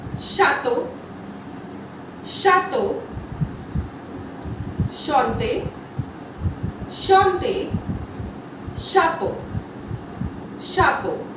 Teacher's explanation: CH always has a sound of SH. CH का हमेशा sound SH आएगा.